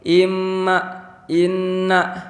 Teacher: Karena huruf mim dan nun itu makhrajnya itu ada di rongga hidung, di al-khoisyum. Jadi kalau rongga hidung ditutup, mim dan nun itu gak bakal bisa keluar. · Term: gunnah